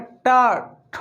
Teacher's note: जैसे हम बोलते हैं री, टा, पुनः रा, श, टा वर्ग में टा, ठ, आप देख रहे हैं जिह्वा जो है ऊपर जा रही है मूर्धा में, इसलिए ये सब के सब जो है उच्चारण स्थान कहाँ है, मूर्धा है।